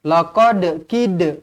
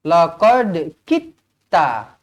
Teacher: kita buang huruf dal ni, kita hazafkan dia. Kita buang terus, kemudian kita masukkan terus kepada huruf ta. Laqad kita. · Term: idgham mutajanisain